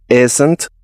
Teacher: sonido de la I ahogada y Z, como la avispa, z, z, N y T.